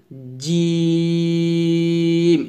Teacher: আপনাকে শুধুমাত্র জিহ্বার মধ্যখানটা উপর তালুর সঙ্গে লাগিয়ে জিমটা উচ্চারণ করতে হবে। আর একটু শক্ত করে উচ্চারণ করবেন জিম, এভাবে।